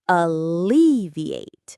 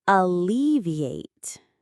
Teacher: The stress, the little push of energy is on the second part. Alleviate. It sounds a little bit like the word elevate, which means to lift something up.